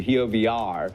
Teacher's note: For example, when he said we, he used more of a V, a sound between W and V, instead of his clear W sound he uses elsewhere